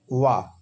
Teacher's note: वा का उच्चारण स्थान दंत और ओष्ठ दोनों होता है, क्योंकि वा को उच्चारण करने के लिए दांत, जीवा को दांत और ओष्ठ दोनों को स्पर्श करना पड़ता है।